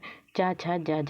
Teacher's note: जो तालव्य व्यंजन है चा छा जा झा, तो ये तालु से बोले जाते हैं।